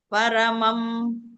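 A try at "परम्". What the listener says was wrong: ಪರಂ ಇಲ್ಲಿ ಪರಮ ಅಲ್ಲ, ಪರಂ.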